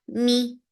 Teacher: For kasra, give e sound. The sound is very short.